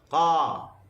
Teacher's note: Tafkhim adalah bunyi yang terhasil dari huruf yang bersifat dengan isti'la. Bunyi berbeza kerana pangkal lidah terangkat ketika menyebutnya.